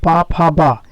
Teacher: पा फा बा ओष्ठ से आएगा, स्पर्श भी हो रहा है